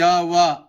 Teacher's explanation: जिन व्यंजन वर्ण के उच्चारण करने में हवा बिना संघर्ष के बाहर निकल जाती है वह संघर्षहीन व्यंजन कहलाता है।